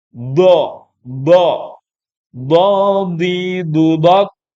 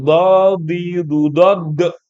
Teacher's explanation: Tapi dot tidak boleh ada dot dipantulkan. Karena nggak masuk huruf qalqalah.